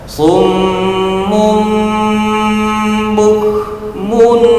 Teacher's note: Di sini iqlab ya, karena ada tanwin bertemu dengan huruf ba, maka cara membacanya berbunyi huruf mim mendengung panjangnya 2 harokat